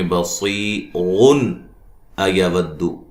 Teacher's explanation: نون تنوین کا اظہار ہوگا، غنہ نہیں کریں گے